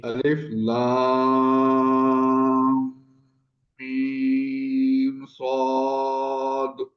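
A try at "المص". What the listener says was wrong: جی غنہ نہیں آیا ہم تک. آپ نے ادا کیا ہوگا، ہمارے تک نہیں آیا.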